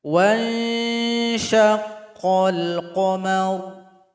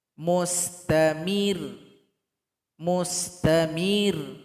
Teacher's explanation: Kalau seandainya dia bertasydid maka huruf yang berada sebelumnya harus diangkat nadanya sedikit, ditekan kepada huruf ro.